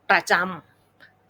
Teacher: ประจะออกเสียงเบาๆไม่ลงน้ำหนักนะคะแล้วก็เน้นเสียงที่จำ